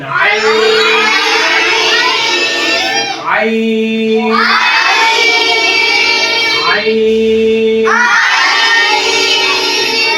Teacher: সবাই হলকের মধ্যখানে চাপ দিয়ে উচ্চারণ করবেন।